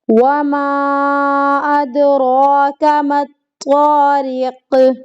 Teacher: دال پر قلقلہ ہو رہا ہے